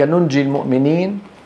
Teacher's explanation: ننجي نونين الاولى منطوقه والثانيه مخفاه مخفاه لان بعدها جيم